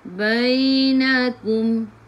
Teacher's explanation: Sebelum ya baris atas bacaan lin, bacaannya lembut. Bainakum, mim bertemu dengan ba ikhfa syafawi, dengung rapatkan bibir tapi jangan tekan